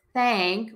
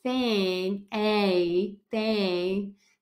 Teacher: it's that short a that's a little more open but it's a little bit longer